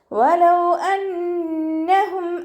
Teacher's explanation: വാ ഉച്ചരിക്കുമ്പോൾ ചുണ്ടുകൾഒന്ന് വട്ടത്തിൽ പിടിച്ചിട്ട് ഉച്ചരിക്കാൻ ശ്രദ്ധിക്കണേ പല്ലു ചുണ്ടിൽ തട്ടാത്ത രൂപത്തിൽ ഉച്ചരിക്കുക അഹ നൂനിന് ശ്രദ്ധ വന്നു അക്ഷമനാണ് നന്നായിട്ട്